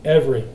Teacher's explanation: we're dropping a syllable in the middle of the word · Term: syncope